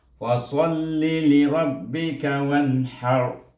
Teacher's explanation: kerana ra tu dibaca tebal, dimatikan dengan tebal